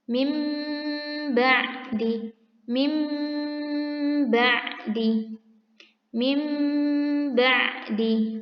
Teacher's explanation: Itu dia huruf iqlab, yaitu ba. Cara membacanya diubah menjadi mim dengan tempo gunah yang dipanjangkan. Ya, cara membacanya arahkan ke huruf mim.